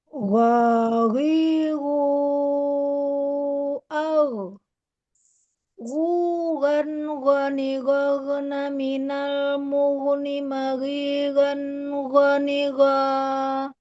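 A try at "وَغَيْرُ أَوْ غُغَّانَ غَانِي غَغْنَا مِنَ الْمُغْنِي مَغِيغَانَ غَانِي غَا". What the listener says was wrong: Pada makhrajnya itu kurang ke bawah ya. Terus ketika sukun itu kurang mengalir. Jadi belum tuntas aliran suaranya sudah ditarik ke huruf setelahnya, selanjutnya.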